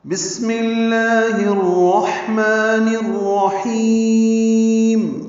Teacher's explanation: سین ساکن پہ ہمس یعنی سانس جاری رہے گی